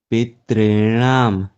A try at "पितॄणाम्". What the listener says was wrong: दो ता का उच्चारण नहीं होगा, दो ही हो रहा है। री को ही दीर्घ करना है, ता को डबल नहीं।